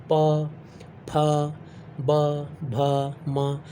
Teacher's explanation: इन सभी में आपके दोनों लिप्स टच कर रहे होंगे, इसीलिए ये ओष्ठ वाला उच्चारण वाला ये व्यंजन हो गया।